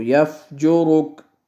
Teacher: یہاں پہ وقف کریں گے، لہٰذا اس کو یفجرک، را کو ساکن پڑھیں گے